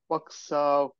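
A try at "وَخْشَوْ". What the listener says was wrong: টান হবে না, ওয়াকশাও আগে বলি, কটা বলে নি।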